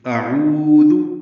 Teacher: عین وسط حلق سے ادا ہوگا